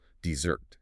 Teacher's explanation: you drop the anvil on the first syllable